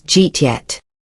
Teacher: It's so fast that the did you turns into Jeet. English speakers do this all the time because it's easier to say.